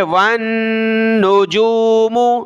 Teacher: نون کے اوپر تشدید ہے تو ہم نے غنہ کرنا ہے. وَالنُّجُومُ, جیم واو پیش جو, میم پیش مو.